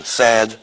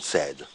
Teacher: the vowel in sad is longer than the vowel in said. Okay, a few milliseconds longer, but it's quite reliably longer. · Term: duration